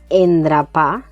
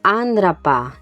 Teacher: Es un sonido que está entre una e y una a, lo que llamamos bucal neutra. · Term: vocal neutra